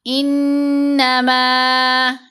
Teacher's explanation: نون پر غنہ کریں گے، میم کے اوپر مد منفصل ہے، میم کو 3 سے 4 حرکات کی مقدار لمبا کیا